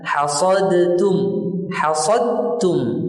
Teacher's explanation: hilang dalnya, betul-betul hilang, tenggelam di dalam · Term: idgham kamil